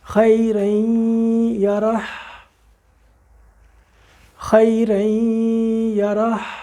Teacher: یہ آخر کا ہا ہم نے اپنے حلق میں سے اس کو چھوڑا، ہوا کو چھوڑا تو یہ اس کے ساتھ نکل کے آ گیا.